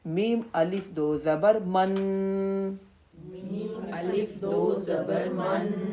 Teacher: تو ہم اس لفظ کو ادا کرتے ہوئے اس کی آواز تھوڑی دیر کے لیے ناک میں روکیں گے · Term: غنہ